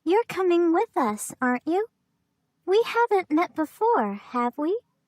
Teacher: notice the rising intonation in tag questions to confirm information